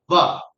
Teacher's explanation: दांत और होठ जब मिलता है तब जाकर ये व का उच्चारण होता है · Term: दंतष्ट वर्ण